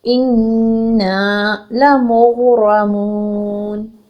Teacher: را جب زبر آتی ہے تو ہم اس کو پر پڑھتے ہیں · جب ہم نون کو ساکن کریں گے وقف کی صورت میں کیا کریں گے؟ 6 حرکت تک طول لے کے جائیں گے، جو کہ افضل ہے.